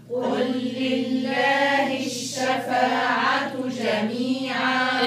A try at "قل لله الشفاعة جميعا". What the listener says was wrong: الها في لفظ الجلالة لله الشفاعة في مكان في كسرة، حقق الكسر. قل لله الشفاعة جميعا.